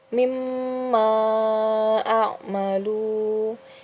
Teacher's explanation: Ini terdapat hukum tajwid mad jaiz munfasil. Mad jaiz munfasil karena mad asli bertemu hamzah di lain kata. Ini dibaca 2, 4 atau 5 harokat.